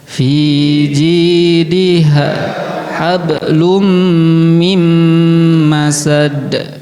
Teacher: Maka harus digunah eh digunakan diidgamkan, dimasukkan plus ada gunahnya karena idgam biguna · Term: idgham bi gunah